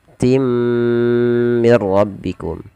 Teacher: Masukkan tanwinnya ke huruf mim dan ditahan dengan gunnah sepanjang 2 harakat. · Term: idgham bi gunnah